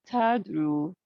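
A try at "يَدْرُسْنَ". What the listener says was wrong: Yadrusna. So Yadrusna is a ya, not a ta. Yadrusna.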